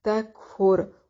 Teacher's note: را کو موٹا پڑھیں گے، وقف کی صورت میں بھی اور وصل کی صورت میں بھی